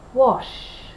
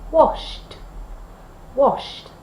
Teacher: If the verb in its infinitive form has no vibration, for example, wash, wash, then we use t.